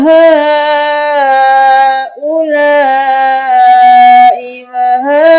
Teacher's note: हा को हमने चार अलिफ के बराबर खींचा क्योंकि ये तीन अलिफ के बराबर छोटी मत खींची जाती है।